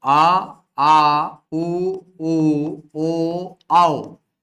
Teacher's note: ऐसे स्वर जिनका उच्चारण करते समय जिह्वा का पश्च भाग सक्रिय होता है वे कहलाते हैं पश्च स्वर।